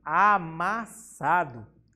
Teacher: Vemos que o sa a gente pronuncia com maior intensidade. Então, essa é a sílaba tônica.